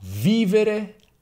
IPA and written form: ˈvivere (vivere)